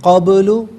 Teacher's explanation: با ساکن میں آواز لوٹتی ہوئی محسوس ہو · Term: قلقلہ